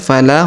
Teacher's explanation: huruf la kita panjangkan dua harakat karena terdapat Alif di depannya